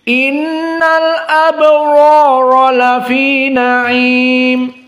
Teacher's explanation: Maka di sini ro dengan alif mad tabi'i lebih tafkhim daripada ro yang kedua.